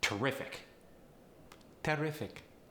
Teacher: it's also going to get that emphasis on the second syllable